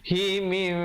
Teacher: Tukarkan bunyi nunnya, nun matinya kepada mim yang nipis, 2 harakat. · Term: iqlab